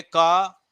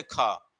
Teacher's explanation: जहां पर सिर्फ क का प्रयोग किया गया है मतलब के का प्रयोग किया गया है इसको उच्चारण करने में कम वायु निकलेगा जबकि के एच का उच्चारण करने में ज्यादा वायु निकलेगा